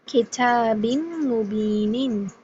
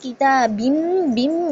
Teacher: آپ نے کہا کتابم بم، یہاں پر ہم نے نون کی ساؤنڈ بالکل ہی ٹوٹلی ڈراپ کر دی، یعنی نون جو ہے وہ ٹوٹلی ڈراپ ہو گیا ہے. غنہ اور ساؤنڈ دونوں میم کے، یعنی 100% آپ کو جو ساؤنڈ ہے وہ میم کی سنائی دے رہی ہے. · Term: کمپلیٹ غنہ